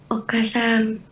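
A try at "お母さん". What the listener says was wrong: Okasang. Jadi kayak kan A-nya double nih. Iya, A-nya dipanjangin. Okasang.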